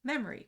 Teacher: which in many dialects um doesn't have the O pronounced uh out loud, but the O is still typically spelled when it's written. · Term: syncopy